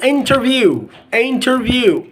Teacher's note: when n is followed by T you can delete the T sound